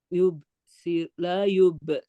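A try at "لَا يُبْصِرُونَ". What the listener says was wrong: La-nya panjang. wa tarakahum fi zulumatil la yubsirun.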